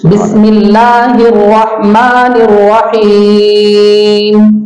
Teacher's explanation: الرحمن میں ہا کو حلق سے نکالے، بیچ حلق سے